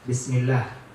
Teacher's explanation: huruf sin seperti tadi tidak boleh dia cepat habisnya, tapi dialirkan karena dia huruf hams.